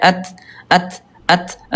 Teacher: udara sedikit ada percikan aja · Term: alhams